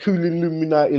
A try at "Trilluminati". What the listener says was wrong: Not Trilluminati. It's not Trill Illuminati. I'm not the Illuminati. This is Trilluminati. Trilluminati.